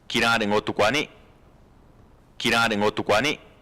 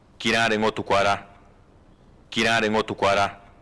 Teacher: And so they importantly have different tones. One's the highest level, 4, one's the lowest level, 1.